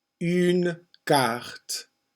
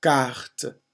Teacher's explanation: The C is not as aspirate, not as much air gets blown out when you pronounce a French C.